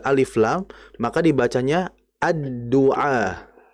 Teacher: Artinya lamnya bukan dibaca al-du'a, melainkan ad-du'a.